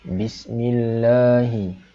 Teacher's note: Kalimah Allah ini ataupun lafzul jalalah dibaca secara nipis. Sebab sebelumnya huruf mim berbaris bawah. Jadi kita baca nipis.